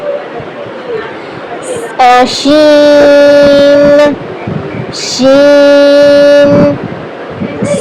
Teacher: سین کی طرح شین بھی پڑھنا ہے, لیکن جو شین میں ہے اس کا درمیان میں زبان کا جو درمیانی حصہ ہے اوپر والے تالو سے جا کر لگے گا اور آخر میں زبان کا جو کارنر ہے, آخری کنارہ ہے, وہ اوپر والے جو دانت ہیں ان کی نرم ہڈی سے جا کر لگے گا.